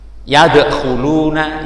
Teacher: dalnya tidak sampai tapi tetap memantul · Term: qalqalah apa sughra